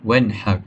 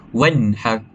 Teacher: nun perlu dibaca dengan jelas tanpa dengung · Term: izhar halq